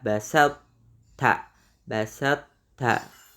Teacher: Untuk yang basat ta ini tetap menampakkan sifat isti'la huruf to.